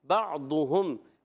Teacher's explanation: عین حلق کے درمیان والے حصے سے، حرف حلقی میں سے بھی ہے